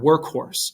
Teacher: again remember c and k are the same thing you it's it's that k sound right a little puff of air comes out of your mouth